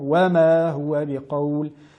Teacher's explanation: la lettre waw est prononcée en arrondissant les lèvres, wa pour bien la mettre en valeur, et non wama, wama.